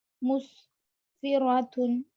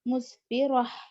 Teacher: گولتا پر وقف کرنا ہو تو ہا ساکنہ بنا دیں گے